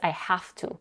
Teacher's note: She's raising her intonation a little bit and she's stressing it because this is one of the most important words, or maybe the most important word here in this particular sentence. She is also devoicing the v to f in the word have.